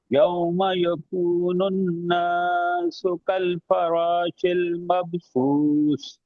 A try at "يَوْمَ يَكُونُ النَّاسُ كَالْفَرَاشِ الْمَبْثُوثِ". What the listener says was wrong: ناس کو لمبا نہیں کرنا، سنیں، یوم یکون الناس، قلقلہ وہ غنہ کرنا ہے، یوم یکون الناس کالفراش المبثوث۔